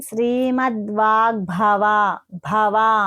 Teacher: కానీ మనము పలికేటప్పుడు వాగ్భవ అనేసిని చెప్తామ అన్నమాట అలాగే భ అన్నప్పుడు గ కి భ వత్తు అనేది ఈ భ అనేది మహాప్రాణ అక్షరము కొంచెం వత్తి పలకాలి